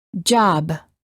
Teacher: air flow by closing our lips therefore B is a stop if we quickly open our lips we can then release the stop and say job